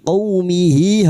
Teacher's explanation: ha damir dengan harakat panjang bertemu hamzah, madd silat thawilah, diperpanjang empat atau lima harakat